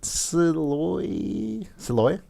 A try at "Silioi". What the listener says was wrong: Silioi, maybe? So, because it's definitely SOL, so soul, but there's an I there before the next O.